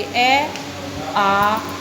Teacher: ए की अपेक्षा बोलने में समय अधिक लग रहा है ना आ को बोलने में, तो ये हमारे दीर्घ स्वर हैं।